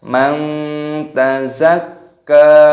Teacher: nun sukun bertemu dengan huruf ta, ini dibaca ikhfa. Ikhfa itu artinya samar